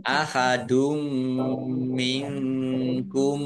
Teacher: nun sukun bertemu dengan huruf kaf bacaan ikhfa dibaca samar-samar · tanwin bertemu dengan huruf mim idgam gunah masuk dengan mendengung